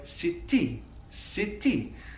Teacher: it's a kind of doubling of that consonant sound that t sound that's very distinctive to the welsh english accent